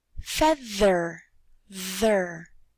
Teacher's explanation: put your fingers back on your vocal cords and say feather, ther. There, do you feel a vibration? Yes, that is called a voiced sound.